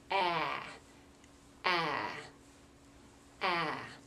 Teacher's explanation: you really have to drop your jaw to say it, and you really have to lengthen that sound. Ah.